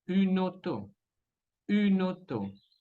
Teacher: Y la última palabra escuchamos auto, combinación de vocal A, U es O. Entonces la N de une se va a conectar con la O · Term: enchaînement consonantique